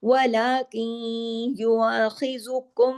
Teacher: लेकिन कहीं नून की आवाज भी नाकिस सी आ रही है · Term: इदगाम नाकिस